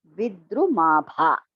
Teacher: Dha is Alpa Prana, Bha is Mahaprana